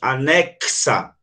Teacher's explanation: em anexa, o X tem 2 sons. Anexa é como se tivesse um K e um S. Então, uma letra aqui, X, representou 2 sons.